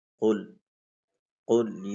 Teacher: یہ جو دو نقطوں والا قاف ہے اس کو ہم موٹا پڑھیں گے، قل باریک نہیں پڑھیں گے